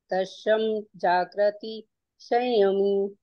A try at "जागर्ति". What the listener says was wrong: हाँ हाँ, यहाँ आपके उच्चारण में भी जागृति, ये जागृति है, जागृति ये वाला है। थोड़ा सा अंतर। जाग जागृति, गर्ती, गर्त समझते हैं ना, जैसे गर्त होता है ना, गर्त, गर्त मतलब गड्ढा। गर्त में गिरना, गर्त मतलब ग, फिर आधा रा, फिर ता।